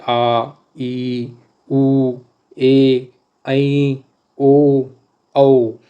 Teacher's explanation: दीर्घ स्वर की बात करें तो बड़ा आ, बड़ी ई, बड़ा ऊ, ए, ऐ, ओ, औ, ये बड़े स्वर हैं, और इनके उच्चारण में 2 मात्रा का समय लगता है या स्वर से ज़्यादा समय लगता है, तो इनको कहते हैं दीर्घ स्वर।